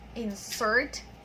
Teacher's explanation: the first insert there is a verb, insert, and then the stress is in the second syllable